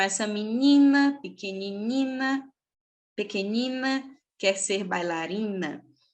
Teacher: Esse som IN, embora junte o I e o N, é um fonema vocálico, né? Não tem um som de consoante, é IN, é como se fosse o I com um acento circunflexo.